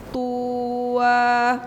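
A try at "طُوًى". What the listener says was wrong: tunya nggak panjang Bu tuwa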